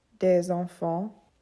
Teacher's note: the S sound when in a liaison, for example, would sound like a Z. So it'd be des enfants.